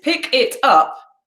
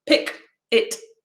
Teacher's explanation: the consonant of the first word joins into the vowel sound at the start of the second word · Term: catenation